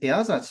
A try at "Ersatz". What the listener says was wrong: Ersatz. The A is longer.